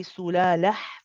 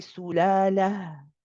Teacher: This ha is the ha from the bottom of the throat. So we want to be careful we don't squeeze.